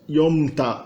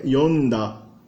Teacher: Por exemplo, o verbo beber, que é yomu, no passado ele ganha aquele ta do passado, mas daí o ta vira da e o m vira n. Então, yomu não é yomta, é yonda, por uma razão de eufonia.